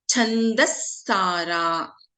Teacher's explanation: there is a Visarga followed by Sa. And in this case, as I have been repeating, we do not chant the Visarga here.